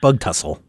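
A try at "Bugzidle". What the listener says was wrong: there's no S sound in between the T and the L.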